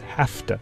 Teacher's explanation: The word to begins with the voiceless T. Some speakers devoice V to F when they pronounce the expression have to as hafta. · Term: devoicing